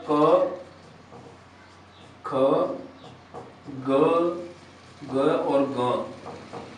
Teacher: कंठ के माध्यम से जो उच्चारित वर्ण होते हैं वो कंठे वर्ण कहलाएंगे